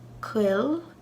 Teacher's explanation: at least in Ulster it's sort of like saying a w without moving your lips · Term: funny little W